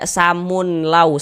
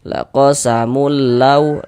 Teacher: Dimasukkan saja, jangan digunnahkan. La gunnah, jadi dia tidak digunnahkan, maka baca pendek saja. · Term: idgham bila gunnah